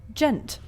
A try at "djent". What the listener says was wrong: There's a D in it.